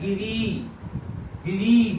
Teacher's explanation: बलाघात बड़ी ई पे हो रहा है